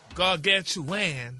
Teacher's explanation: Yeah, it's chew-an instead of chew-on.